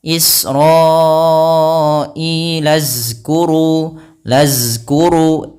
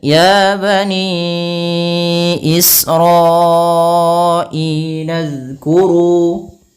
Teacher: huruf zal ujung lidah kita harus kita tempelkan dengan gigi sari atas agar kita menyempurnakan daripada makhraj huruf zal